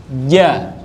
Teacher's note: Ja, pakainya tengah lidah. J, ja, pakainya tengah lidah, tempelin ke langit-langit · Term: huruf J